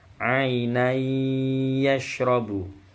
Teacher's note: tanwin ketemu ya. Ini bacaan idgham bi gunnah. Ainai yashrabu. Ya, melebur ke ya. Ainan yashrabu jadi ainai yashrabu.